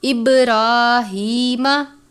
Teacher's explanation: را کے اوپر کھڑی زبر ہے، ایک الف کی جتنا لمبا کریں گے اور را کو پر بھی پڑھیں گے